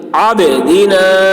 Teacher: با میں قلقلہ یعنی با کی آواز ڈبل نکلے گی · فا میں جھٹکا لگے گا کیونکہ حمزہ جزم ہے تو جھٹکا لگا کے پڑھیں گے